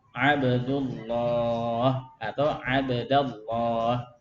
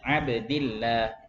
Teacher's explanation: dan tebalkanlah huruf lam min ismillahi dalam atau pada lafaz Allah